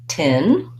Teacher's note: And that's going to help me not only get the rhythm of the word, but the vowel sounds in the word, because my clear vowel is in the stressed syllable, which sounds like tin. It has this lax I vowel, the same vowel that's in big and did.